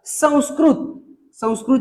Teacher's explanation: जो याचा पर्याय क्रमांक चार जे आहे याचं उत्तर आहे व संस्कृत शब्दातील अनुस्वाराचा उच्चार कोणत्या वर्णासारखा होतो तर व या वर्णासारखा होतो